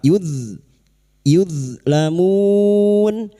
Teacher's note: Hati-hati, huruf d jangan sampai terpental; Ini bukan qalqalah. · bertemu dengan huruf vokal yang dibaca dengan waqf , mad arid lissukun, kita panjangkan selama empat harakat.